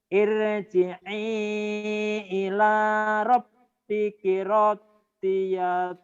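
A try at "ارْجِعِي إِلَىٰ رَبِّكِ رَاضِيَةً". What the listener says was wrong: Rohnya panjang.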